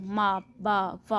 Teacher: the sounds which are formed using both upper and lower lips, यानी वो sounds जो हमारे अपर और लोअर लिप दोनों को इन्वॉल्व करती हैं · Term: बाइलेबियल्स